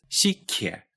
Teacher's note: pronounced sikye, with an aspirated kye at the end